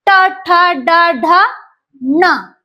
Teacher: यांचा उच्चार करताना जिभेचा शेंडा मुडकतो आणि कुठे लागतो उर्धेला लागतो म्हणजे सेंटर टाळू मुर्दा म्हणजे सेंटर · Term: मुर्धन्य वर्ण